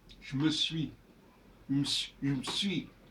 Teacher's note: des E qui n'ont pas à être prononcé mais qui sont consonantiques en fait qui vont renforcer la consonne qui précède